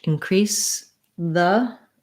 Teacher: So increase the, When I'm moving from the S to the voice TH, increase the. I'm just going to take my tongue from the S position and put it out for the TH position.